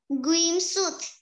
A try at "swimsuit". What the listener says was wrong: Chữ sờ đầu tiên đâu rồi? Không có chữ r nào hết. Con tự thêm chữ r vào, con thấy không? Trong khi cô đâu có đâu.